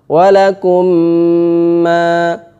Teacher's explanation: Mim ini dimasukkan, mim pertama dimasukkan ke mim kedua. Caranya adalah sukunnya dihilangkan, huruf yang kedua ditasydid. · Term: idgham kamil